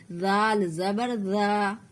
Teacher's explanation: ذال کو بھی بولتے ہوئے زبان کے نوک کو دانتوں میں سٹا کر آگے نکالیں گے